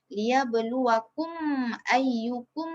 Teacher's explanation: So dia terjadi apabila mim mati dia berjumpa dengan salah satu huruf hijaiyah selain mim dengan ba, selain mim dengan ba. So cara bacaan dia kita kena bacakan dengan jelas mim tersebut. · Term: izhar syafawi